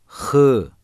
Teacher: boğazın evvelinden Boğazı hırıl atarak çıkarılır Kaim gizli ve yumuşak okunur